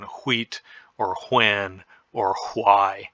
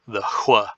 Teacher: the unvoiced or the voiceless bilabial glide